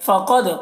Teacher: क़ाफ को पुर पढ़ना है, दाल में कलकला होगा